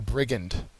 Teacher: brigand has the first syllable accented